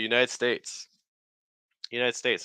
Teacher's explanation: Most of the stress is going to be on states.